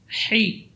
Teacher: Ha huruf yang keluar dari tengah-tengah tenggorokan. Dan ha termasuk huruf rakhawah. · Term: huruf ha